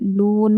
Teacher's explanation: لون میں واو مدہ ہے، واو سے پہلے پیش اس لیے ہم اس کو کھینچتے ہوئے پڑھیں گے. لون ہم یہاں پر رکیں گے کیونکہ جب آیت پر وقف کرنا ہوگا تو وہ کیا کریں گے، ہم زبر آیا تو جزم دے کر سانس توڑیں گے.